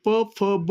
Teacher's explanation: प, फ, ब म्हणताना दोन्ही ओठ मिटवावे लागतात. म्हणून या ठिकाणी ओष्ठ्य हा जो वर्गाचा उच्चारस्थान आहे तो आहे प वर्ग.